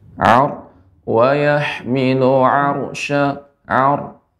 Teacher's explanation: Jadi untuk ra tadi ini ar, ini ra yang tebal ya. Ra ini dibaca dengan tebal tafkhim karena sukun sebelumnya fathah.